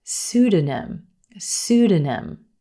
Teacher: the p is totally silent in this word